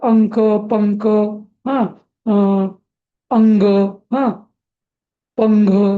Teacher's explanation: क ख ग घ याच्या आधी जर अनुस्वार आला तर अंक, पंक, हा, अंग, हा, पंघ असं म्हणजे न येतो. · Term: अनुस्वाराचा उच्चार